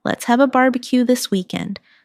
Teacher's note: Stress barbecue and weekend. So, it sounds lively and friendly.